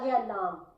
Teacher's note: لام جو ہے یہ طرف لسان اور دواحک سے ثنایا تک مقابل کا تعلق، یہ لام کا مخرج ہے